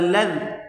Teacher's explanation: لام کو ذال کے ساتھ ملا کر پڑھیں گے، یہ بیچ میں الف نہیں پڑھا جائے گا